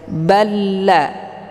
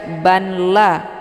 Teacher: dileburkan ke dalam huruf la dengan cara ditekan namun tidak ditahan